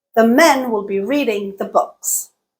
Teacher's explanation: We went from 3 syllables to 8 syllables, but the length of the utterance was about the same. That is because the words that were stressed in all of those sentences were the same. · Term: stress-timed